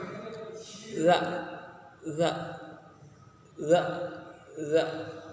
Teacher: Makharijul hurufnya adalah punggung ujung lidah dan ujung dua gigi seri yang atas. Adapun sifat-sifat huruf dari huruf za yaitu adalah jahar, rokhwa, kemudian istifal, kemudian infitah dan juga ismat.